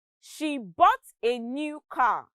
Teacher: new and car are stressed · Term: sentence stress